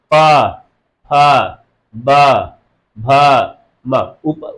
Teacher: इस वर्ण के वर्णों को बोलने पर हमारे ऊपर और नीचे के होठ आपस में लड़ते हैं, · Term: ओठ